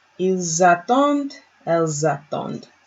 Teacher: You get that Z sound from the S and the A being together. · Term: liaison